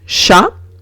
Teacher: la CH en francés no es un sonido fuerte, no es ch, sino sh, como si veo una SH, ¿d'accord?